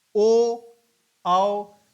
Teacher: ओ ओठ भी है, कंठ का भी प्रयोग हो रहा है, औ इसमें प्रयोग हो रहा है। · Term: कंठोष्ठ